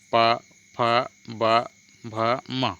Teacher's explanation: ओष्ठ व्यंजन क्या है, जिन व्यंजनों के उच्चारण में दोनों ओष्ठों द्वारा श्वास का अवरोध होता है ओष्ठ व्यंजन कहलाते हैं। मतलब उच्चारण करते समय हमारे दोनों ओठ जो है कुछ समय के लिए बंद हो जाता है, उसको हम ओष्ठ व्यंजन कहते हैं, जैसे कि प, फ, ब, भ, म।